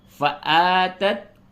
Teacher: حمزہ کھڑا زبر آ، اس کو تھوڑا سا کھینچئے